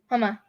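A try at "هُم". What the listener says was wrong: Why you say huma twice? You said hua, huma, huma. That's what you said. So the third one should be what? Home.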